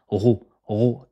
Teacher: c'est comme r en français mais vous gonflez l'arrière de la langue